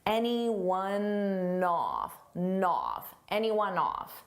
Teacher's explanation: Off starts with a vowel and anyone. It ends on a n sound. So I can take that n and just add it in front of the vowel.